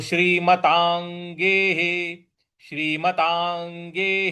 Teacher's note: ता के ऊपर जो अनुस्वार है उसके आगे ग लिखा है तो क ख ग घ अंग का जो अंग आता है वो वाला उच्चारण हम यहां पे लाएंगे